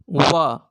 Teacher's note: दंत प्लस ओष्ठ से उच्चारण होगा व।